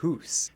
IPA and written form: huːs (house)